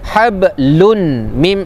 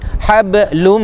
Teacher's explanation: Tanwin baris dua di depan jumpa mim. Hukumnya idgham maal ghunnah. Masuk. Jangan baca hablun mim.